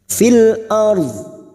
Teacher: dua huruf ini harus kita lunakkan huruf ro dan huruf dad huruf ro sukun yang sebelumnya fathah kita baca tafkim